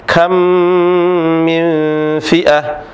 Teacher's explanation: Suara yang bunyi dari hidung dengan disertai dua harokat, ditahan dua harokat, dengan ditahan dua harokat. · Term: gunnah